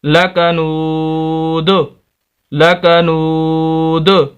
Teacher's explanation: جیسے وقف کریں گے قلقلہ ہوگا، کیونکہ یہ وقف کی حالت میں آخری لفظ ساکن ہو جاتا ہے، دال ساکن ہو جائے گی. اور ساکن حروف جب 5 حروف میں سے دال بھی ہے تو ساکن ہو تو قلقلہ ہوتا ہے، 2 پیش ختم ہو جائیں گی.